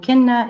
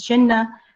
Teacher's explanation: In words like kinna, it becomes chinna, and kano, it becomes chano. So it's affrication